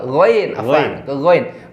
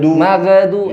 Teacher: Rakhawah disertai dengan isti'la'nya atau suara tebalnya di ghain.